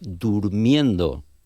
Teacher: hay una vocal velar inicial, sílaba átona, que precede a un diptongo